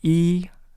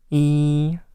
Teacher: the vowel E, when I say E, there's no air coming out of my nose. But when I say the nasal one, it is E.